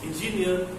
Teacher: the focus stress is on the last syllable